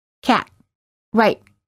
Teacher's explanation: The other way to make this kind of silent T is just to press the vocal cords together and stop the airflow and then release.